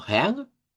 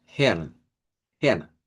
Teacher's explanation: si suenan con la R uvular, va a sonar como Heang. Y si suenan con la R, Hern. Hern, con R.